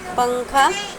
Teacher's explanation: نون کی آواز کو جو ہے ہم ناک میں چھپائیں گے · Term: اخفا